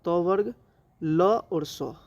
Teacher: दंत से उच्चारण होता है त वर्ग। ल और स। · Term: दंत वर्ण